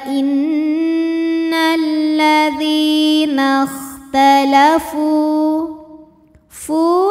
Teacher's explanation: [Musik] innalladziinatalafu Fu ada hukum tajwid namanya Mad Thobi'i dahohiri sebab ada wau sukun yang sebelumnya didahului baris damah maka huruf Fa Ini panjang dua harakat